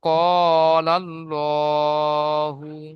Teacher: আল্লাহ শব্দের ডানদিকে যাবার এসেছে তাই আল্লাহর লামকে পুর করে পড়তে হবে। আল্লাহর লামকে পুর করে পড়তে হবে। অর্থাৎ মুখ গোল করে পড়তে হবে।